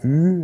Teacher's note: ü war mal u aber es ist ein vorderer Vokal ist also ganz eng phonetisch verwandt mit dem i der Unterschied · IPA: y